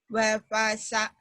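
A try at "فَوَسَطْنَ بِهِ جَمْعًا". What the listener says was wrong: Terbalik. Fawasat. Fawa dulu.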